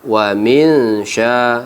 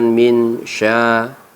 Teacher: Sama, wa min sya, sama dengan min sya, ikhfa hakiki. Kita baca panjang dan kita baca samar dengung.